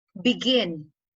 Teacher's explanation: you have one unstressed syllable followed by one stressed syllable